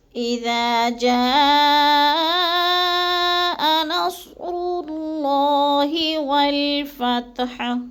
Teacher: جا کو ہم نے تھوڑا سا لمبا کرنا ہے، کیونکہ ادھر مد ہے، مد متصل، یعنی حروف مدہ کے بعد حمزہ ایک ہی کلمے میں ہے تو مد متصل ہے، 4 الفی مد ہے، 4 الف کے برابر ہم نے اس کو لمبا کر کے پڑھنا ہے۔